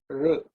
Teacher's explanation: R is when the tongue actually is bent and is pointing upwards.